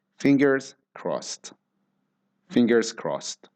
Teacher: crossed ends in ED, but the way we pronounce ED in this case is like a T sound.